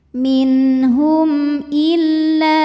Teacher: Maka mim sukun dibunyikan dengan jelas. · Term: izhar syafawi